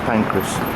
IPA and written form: ˈpæŋkrəs (St Pancras)